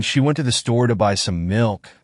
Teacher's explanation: stress falls on went, store, buy, and milk